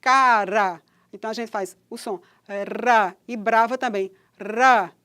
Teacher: O articulado ativo, que é o ápice, a lâmina da língua, toca ligeiramente no alvéolo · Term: TEP